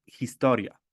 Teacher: en español H es muda, no, no se pronuncia H, pero en polaco sí lo pronunciamos, siempre lo pronunciamos